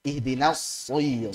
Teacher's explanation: Makanya mau fathah, mau dhammah, mau kasrah, dia lebih tebal daripada yang isti'ala, daripada yang kho. Sehingga kok kayaknya saat kasrah kayak masih tebal banget ya, wajar karena sifat idbaqnya dominan.